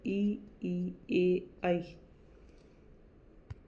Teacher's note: जिन स्वरों को बोलते समय जिह्वा का अगला भाग सक्रिय रहता है या अगला भाग काम में आता है, अग्र स्वर कहलाते हैं